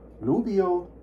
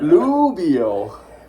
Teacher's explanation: from a second tone to a third tone falling